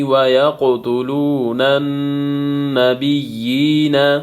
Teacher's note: واو مدہ ہے، واو ساکن پہلے پیش ہے، اس کو ایک الف کے مقدار کھینچنا ہے